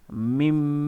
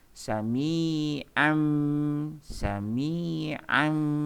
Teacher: Nun mati bertemu ba, ya, merubah bunyinya, memasukkan bunyi nun ke dalam huruf ba ni, jadi bunyinya mim. Bukan min. Mim. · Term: iklab